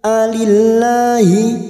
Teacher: lam jalalah yang sebelumnya kasroh kita baca tarkik atau tipis